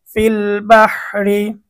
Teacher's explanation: আমাদের রটা চিকন হবে, রয়ের উচ্চারণটা আমরা পাতলা করব।